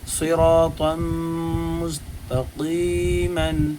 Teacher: صراطا مستقیما، یہاں صاد بھی پر ہوگا اور یہاں پر طا بھی پر ہوگا اور را بھی پر ہوگا۔ صاد اور طا تو اس لیے پر ہو رہی ہیں چونکہ حرف مستعلیہ میں سے ہے، را اس لیے پر ہو رہا ہے چونکہ را کے اوپر زبر ہے۔